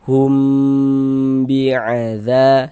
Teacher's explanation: Yang yang humnya yang kita tahan kita panjangkan dua harakat.